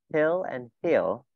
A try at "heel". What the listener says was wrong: Từ heel nó cần dài thêm một chút nữa.